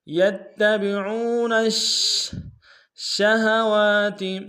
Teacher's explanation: شین حرف تفشی میں سے شین کے اوپر تشدید زور دیں گے